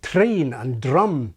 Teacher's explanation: famously there are still Scots who use a tapped or even trilled r